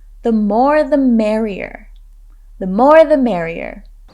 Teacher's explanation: notice how we emphasize the words more and merrier